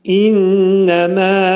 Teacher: İnnəmədə innə mə'al gunnədir. Burunda şiddətli sıxılır.